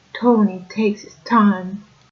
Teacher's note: T's are very dentalized. They are very pushed back against the teeth. So a sentence like Tony takes its time would sound something like Tony takes his time.